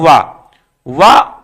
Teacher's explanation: केवल वा केवल है जो दंतोष्ठ से बोला जाता है।